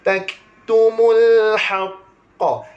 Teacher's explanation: Tapi tuan-tuan sekalian, apabila kaf tersebut mati, dia akan berlebihan hamas dia